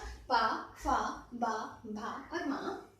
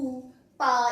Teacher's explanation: इनको ओष्ठ ध्वनियां कहते हैं क्योंकि होठों का प्रयोग ज्यादा होता है। ऊ, पा, इसको तो आप बोल करके आराम से महसूस कर सकते हैं कि आपके होंठ किस तरह से घूम रहे हैं।